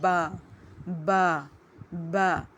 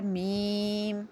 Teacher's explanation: ہونٹوں کے 2 پارٹس ہیں، ایک ڈرائی پارٹ ایک ویٹ پارٹ. ویٹ پارٹ آپس میں مل رہے ہیں تو با ادا ہو رہا ہے، ڈرائی پارٹ آپس میں مل رہے ہیں تو میم ادا ہو رہا ہے